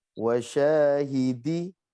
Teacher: 2 harokat itu 2 huruf pendek. Jadi misalnya nih, wasyahidi, panjangnya sya itu seukuran dengan hidi. Jadi tergantung temponya segimana.